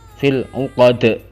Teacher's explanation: Fil 'uqad, itu dalnya dal qalqalah, yaitu dia memantul saat berhenti, harus dipantulkan.